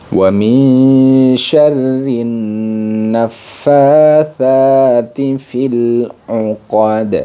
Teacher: makhraj ujung lidah bertemu dengan ujung gigi seri atas, sama dengan dzal dan dha · huruf dal yang dibaca qalqalah kubra, di mana dia wajib dipantulkan